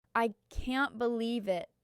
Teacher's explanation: Your voice rises sharply at the end. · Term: intonation